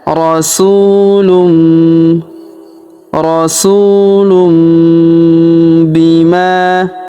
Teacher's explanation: Kita tahan dan kita dengungkan 2 sampai 3 harakat. Tanwin unnya berubah menjadi mim. · Kemudian tanwin un huruf lun, ya perhatikan ya, bertemu dengan huruf bi, maka tanwin unnya melebur masuk ke huruf bi. Kita tahan dan kita dengungkan 2-3 harokat. Tanwin unnya berubah menjadi mim ya.